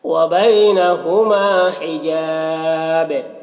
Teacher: حجاب، یہاں پر الف مدہ ہے، اور یہاں پر وقف کی صورت میں با کا جو دو پیش کی تنوین ہے سکون سے بدل جائے گا، تو با میں قلقلہ ہوگا، اور پھر یہاں پر وقف کی صورت میں مد عارض وقفی بھی ہوگا، تو اس طرح سے پڑھیں گے۔